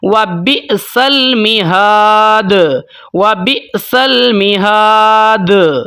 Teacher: اب یہاں پر میں دال کو ہلاؤں گا تھوڑا سا زیادہ کر کے، یہاں پر جو میں قلقلہ کروں گا تھوڑا سا زیادہ کروں گا، وَبِئْسَ الْمِہَادُ، وَبِئْسَ الْمِہَادُ۔ ٹھیک ہے، اب یہاں پر میں دال کی آواز کو زیادہ ہلا رہا ہوں، قلقلہ زیادہ کر رہا ہوں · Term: قلقلہ کبیرہ